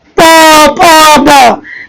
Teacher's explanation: दोनों होठ आपस में मिलता है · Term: ओष्ठ